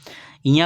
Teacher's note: ञ का उच्चारण तालु के साथ नाक से होगा। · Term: नासिक व्यंजन